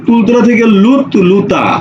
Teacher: ত আগে ছিল ল পরে ছিল ল আগে আসছে ত পরে গেছে ত আগে ল পরে ল আগে ত পরে অর্থাৎ স্থান পরিবর্তন